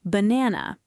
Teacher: It's that soft, neutral uh sound that appears in unstressed syllables. Banana, the first A is a schwa.